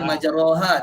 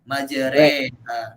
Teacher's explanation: Jadi dia kena condongkan fathah dia, condongkan berbaris atas tu. Dia bukan baris bawah, tapi dia dicondongkan baris atas tu. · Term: Bacaan Imala